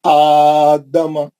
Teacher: دال کو اور میم کو جلدی پڑھا میں کیونکہ ایک ہی حرکت ہے